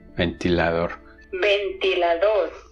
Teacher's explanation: the voiced alveolar plosive, which is pronounced dentally in Spanish, has been aspirantized